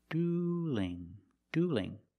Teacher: the L in dueling is between vowels, so we have to change that L to a light L.